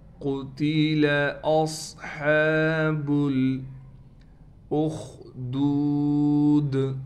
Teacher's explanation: صاد میں سیٹی بھی ہے اور صاد کو موٹا بھی کرنا ہے۔